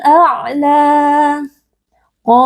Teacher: faqbukumul a qo huruf tebal kita baca dengan mengangkat pangkal lidah qo juga ada Mad thobii karena ada Alif yang sebelumnya berharakat fathah kita baca panjang dua harakat